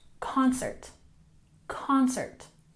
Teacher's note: concert we emphasize the first syllable